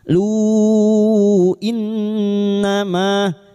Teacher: bertemunya mad dengan hamzah di lain kalimat mad jaiz munfasil lima harakat